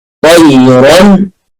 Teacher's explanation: طاء مفخمة، الياء مرققة، الراء مفخمة علشان مفتوحة